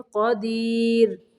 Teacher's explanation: را کو باریک پڑھیں گے، ساکن کرتے ہیں